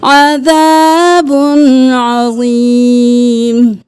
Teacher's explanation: اب عذاب عظیم نہیں کرنا، تنوین ہے اس کے بعد عین ہے تو ہم یہاں پہ حروف حلقی میں سے عین ہے تو ہم یہاں پہ غنہ نہیں کریں گے